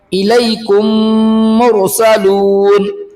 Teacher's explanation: میم ساکن کے بعد میم آئے تو میم کو میم سے ملا کر غننے کے ساتھ پڑھا جائے گا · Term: ادغام شفوی